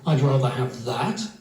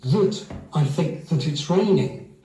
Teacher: One points to an object which is there as in I'd rather have that. And in English it's always pronounced strong. Then there's the little connecting word which is generally weak